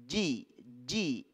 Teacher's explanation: huruf Jim di tengah lidah lidah bagian tengah yang dibenturkan ke langit-langit